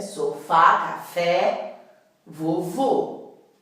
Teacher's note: palavras oxítonas que tem a última sílaba tônica última sílaba forte